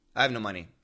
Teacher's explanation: the word no comes in the middle of a sentence it's really short